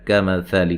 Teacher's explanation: کاف کو باریک، ثا کو نرم